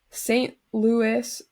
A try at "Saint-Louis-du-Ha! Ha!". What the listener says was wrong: First of all, you're not going to pronounce the S because it's French. He was Saint Louis du Haha.